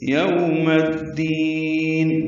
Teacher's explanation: میم کو الدین کی دال سے ملا دیں گے. ادغام شمسی ہوگا، الف لام نہیں پڑھیں گے اور دال کو لمبا کریں گے